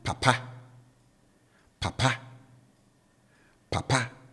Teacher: the tone on the first syllable is down. And then on the last syllable, I raise it.